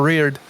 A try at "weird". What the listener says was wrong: There's definitely R in there. There's definitely R.